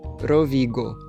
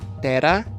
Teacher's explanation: E note que como no nome da região Rovigo e na palavra terra, nós não temos o r vibrante como no italiano. Só o r, mesmo se for no começo.